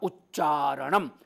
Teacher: अन हो के चारण वो अलग बात है उत जमा चारण तो ये जो त है और चारण का च है च वर्ग आगे है त वर्ग पहले है तो त च बन जाएगा